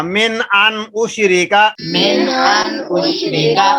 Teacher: اور نون کے بعد پھر حمزہ آ رہا ہے، تو ان کے بعد غنہ نہیں ہوگا۔